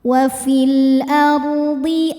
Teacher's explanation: sebelumnya ada baris fathah maka rnya tebal.